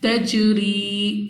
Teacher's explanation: جیم قلقلہ میں سے ہے تو ہم نے اپنی آواز کو واپس لوٹتی ہوئی ادا کرنا ہے